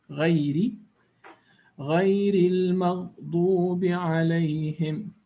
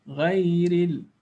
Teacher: this ra will be recited with tarqiq or making it lighter, not strong or heavy. We call it the ra with empty mouth, with empty mouth, muraqqaqa.